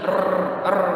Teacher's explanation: Jadi ada getaran, ada pengulangan. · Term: Takrir